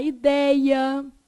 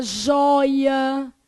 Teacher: é pronunciado pelo quê nariz perfeito ditongo aberto o que que é um ditongo aberto tem o e aberto ou ó aberto